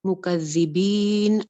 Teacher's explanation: دال میں سیٹی نہیں آئے گی، یہ سیٹی والا لیٹر نہیں ہے، اس چیز کا خیال رکھنا ہے.